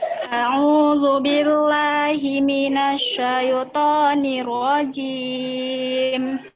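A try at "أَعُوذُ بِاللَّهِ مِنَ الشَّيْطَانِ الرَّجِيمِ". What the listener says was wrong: oke, matobinya sudah, hanya jelas shin ya. Ingat ya, ujung lidah keluar. Zu. A'udzu billahi minasyaitonir rajim.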